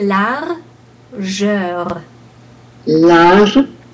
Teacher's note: in this situation, we do pronounce the final R